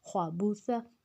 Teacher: اب جو اگلا لفظ ہے خواہ، خواہ موٹا ہے، با سمپل ہے، تا نرمی والا حروف ہے، اس کو سا کو ہم نے بار بار جو ہم نے پیچھے بتایا ہے، سا کو نرمی سے ادا کرنا ہے، سیٹی نہیں لگانی، اور اس کو زبان کی نوک کو دونوں دانتوں کے کنارے میں لے کے آنا ہے، اس کو نرمی سے ادا کرنا ہے، خواہ کو موٹا رکھنا ہے۔